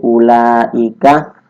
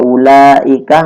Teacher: ada mat tabi'i bertemu dengan hamzah dalam satu kalimat, itu termasuk bacaan mat wajib muttasil, panjangnya 2,5 alif atau 5 harokat